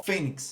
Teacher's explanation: E como termina em X, então é uma paroxítona terminada em X, eu acentuo, ó, fênix. Não é timbre aberto e sim fechado, por isso que eu uso o acento circunflexo.